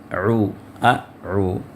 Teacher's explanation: اب یہاں پھر سے میں آپ کو یاد دہانی کرواؤں گا کہ یہاں پر اعوذ پہلے حمزہ ہے پھر اس کے بعد عین ہے اعو، حمزہ آخری حلق سے اور اس سے اوپر والے یعنی وسط حلق سے عین، دونوں کے مخرج میں فرق ہے۔